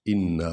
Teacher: نون کو لمبا کریں گے، الف ہے اور شد ہے، 2 بار پڑھا جائے گا یہ حرف